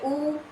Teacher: स्थान क्या है ऊठ है क्योंकि जब बोलेंगे उ तो देखिए आपके होठ जो है गोल हो जाते हैं और पास में आ जाते हैं